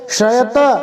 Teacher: शयत, इसके अंदर तालव्य श, शंकर वाला श है